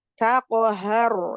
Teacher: pangkal tenggorokan ya, dekat pita suara ha satu makhraj dengan hamzah